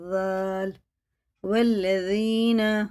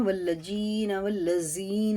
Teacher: یہ باریک ہوتا ہے، زبان کی نوک اوپر والے سامنے والے دانتوں کے کنارے سے لگا کے